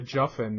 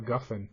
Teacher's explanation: the Yemenites from Sana'a are the ones that pronounce the Gimel like a Jim, break free a Juffin instead of a Guffin.